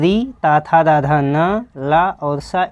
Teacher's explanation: ल त थ द ध न ल और स इन सभी सबों का उच्चारण स्थान क्या है भाई? दंत है।